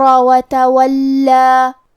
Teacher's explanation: یہاں لام پہ تشدید ہے تو ہم دو حرف کے برابر حرف اللام کو پڑھیں گے